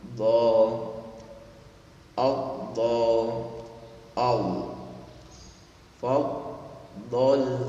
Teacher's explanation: Huruf dha ketika Anda mengucapkan itu tebalnya di lisan. Ya, tebalnya di lisan, tidak memonyongkan seperti do, tapi ditebalkan lisannya di dalam